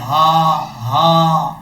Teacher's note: اور آگے حمزہ کے بعد جو ہا ہے، یہ ہا بھاری ساؤنڈ کے ساتھ پڑھا جائے گا۔ اس کی آواز سینے سے نکلے گی، جیسے ہا ہا، اس طریقے سے حمزہ کو ہا سے ملائیں گے۔